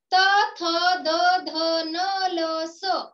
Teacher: त थ द ध न ल स या वर्णांचा उच्चार करताना आपली जी जीभ आहे ती जीभ ही दाताला स्पर्श करते, म्हणून त्या ठिकाणी दंत्य वर्ण होतो.